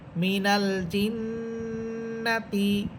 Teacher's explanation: হরকতের পর তাসদিদ, নুন হরফের উপর, এই জন্য এখানে গুণনা হবে